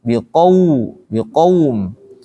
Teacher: Kalau qaum berarti ada waw di situ harus dimonyongin.